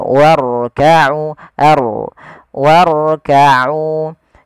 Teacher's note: jangan sampai huruf ro itu takrirnya berulang kali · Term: ro tafkhim